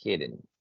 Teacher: También la pronunciación de la palabra hidden es algo particular. La E no se pronuncia casi.